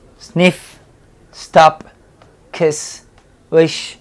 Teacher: al final va a haber un sonido sordo Por decirlo así sin vibración de la garganta